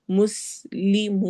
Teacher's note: मुस में सीन में सिटी वाली आवाज होगी, और मुस्लिमून वाव मद्दा और मद आरिद वक्फी।